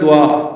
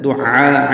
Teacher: دعاء عین کے ساتھ ہے، عین وسط حلق سے ادا ہوتا ہے، اس میں مد واجب ہے، مد متصل ہے، الف مدہ کے بعد حمزہ آنے کی وجہ سے لمبا کرنا ہے اس کو، دعاء آخر میں حمزہ ہے وہ جھٹکے سے پڑھا جائے گا۔